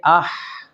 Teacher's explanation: وسط حلق سے ہا ادا ہوا اور یہاں سے سانس جاری ہوا